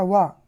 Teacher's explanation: इसका सूत्र होता है वकारस्य दंतोष्ठा। तो वा का उच्चारण स्थान क्या है? दांत और ओष्ठ।